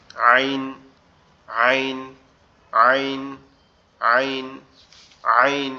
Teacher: এই কন্ঠনালীর মাঝ বরাবর অর্থাৎ এই গলার যে উঁচু উচু জায়গাটা আছে এখান থেকে উচ্চারিত হবে